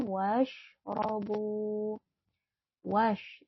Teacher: shin itu ada sedikit udara yang keluar ya, berbeda dengan huruf sin. Kalau huruf shin itu ada sedikit udara yang keluar.